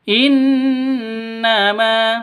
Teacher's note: Gunnah musyaddadah, dengung 2 ketukan.